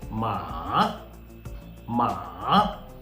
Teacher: your voice should fall and then rise okay and the rule is also saying falling then Rising okay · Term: third tone